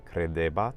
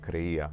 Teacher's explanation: The imperfect in Latin for the third person singular would be credebat, but then in Spanish we actually have creía. So both the da sound and the ba sound became eliminated, and the final T sound also became eliminated. So we can see how that da sound in the middle of vowels and that ba sound in the middle of vowels, they both became eliminated in modern Spanish, and we're left with creía, which formerly in Latin again was credebat.